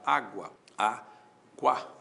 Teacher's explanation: o u é semivogal, o a é vogal, o ditongo é crescente